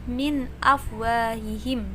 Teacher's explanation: Min, nun sukun bertemu alif, idhar halki dan ini dibaca jelas. Jadi min afwahihim, bukan min, maksudnya bukan memasukkan ya, tapi idhar itu jelas.